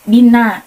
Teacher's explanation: nun yang bertasdid, cara bacanya didengungkan kurang lebih 2 harokat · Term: gunah